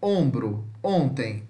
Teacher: semi-fechado posterior nasal arredondado